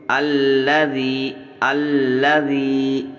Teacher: یا مدہ ہوگا، اس کو کھینچ کر کے پڑھیں گے